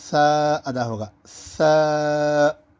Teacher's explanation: اگر زور کی آواز سے نکالیں گے تو وہ سین شمار ہو جائے گا، تو اس لیے بالکل نرم آواز کے ساتھ آپ کے دونوں دانتوں کے سائڈ سے ہلکی سی ہوا نکلے گی اور سا ادا ہوگا۔